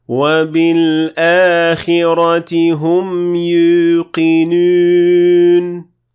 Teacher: More specifically, you will be mixing the sound of the waw with a hint of the ya sound. So you will kind of be pronouncing both at the same time.